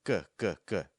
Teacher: When you make a G, that's the back of your tongue going real high.